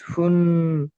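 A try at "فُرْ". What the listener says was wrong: ফুন কেন হবে? রর সঙ্গে মিলিয়ে পড়েন, রর সঙ্গে মিলিয়ে পড়ছেন তো। ফা র দু পেশ ফুর। তাহলে বলেন রউ ফুর।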